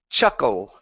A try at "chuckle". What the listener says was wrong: Almost. You're still moving your lips.